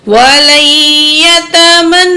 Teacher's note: واو زبر وا، لام زبر یا، لئی، وَلَن، یا زبر یا، وَلَن، تا زبر تا، میم زبر نون من، نون زبر واو نو، وَلَن يَتَمَنَّوْهُ. تو یہاں نون تشدید ہے، اس لیے ہم نے یہاں پہ غنہ کرنا ہے. ہا پیش ہو، وَلَن يَتَمَنَّوْهُ.